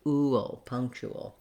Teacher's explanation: We have that dark L with a little bit of a schwa before it.